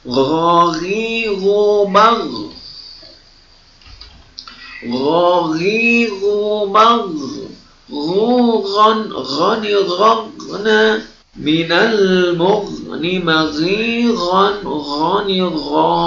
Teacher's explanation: Jadi perhatikan keluar hurufnya dari ujung tenggorokan, ya. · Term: huruf gha